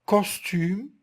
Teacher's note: vous devez constater que ko se prononce à l'arrière de la bouche, ça veut dire il est dorsovélaire